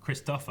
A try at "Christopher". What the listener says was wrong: There's no R. It's Tofa. Christopher.